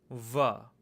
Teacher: you take your upper teeth and you have that meet with the lower lips to get the va sound. Va. Again, if you were to make that sound indefinitely, it's self-sustaining, but because it's directly articulating with the lips, these are considered a semi-vowel.